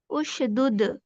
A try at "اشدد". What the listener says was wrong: نہیں اش پہ قلقلہ نہ کریں. اشدد.